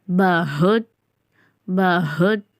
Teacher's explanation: அடித்தொண்டை ஹா அதனால அந்த ஹா சவுண்டோட பஹுத்